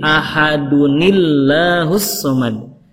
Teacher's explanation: Kata Allahnya dibaca tarkik karena sebelumnya kasroh